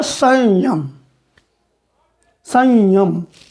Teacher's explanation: तालु का से बोले जाने वाला अनुस्वार एक्चुअल में य है